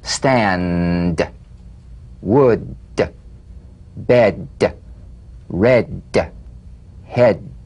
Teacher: Play this D drum beat on the springing away of the tongue from the upper gum ridge. Feel a pulsation in the tongue.